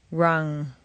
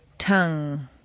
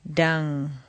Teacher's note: the back of the tongue presses back and again the air comes out through the nose